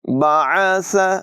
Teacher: بعث، عین کو نمایاں کریں گے۔ بعث، سا میں بغیر سیٹی کی ادائیگی ہوگی